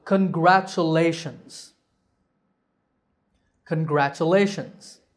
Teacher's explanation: They are pronounced CH. The word has a total of 5 syllables. Congratulations. The stress is on lay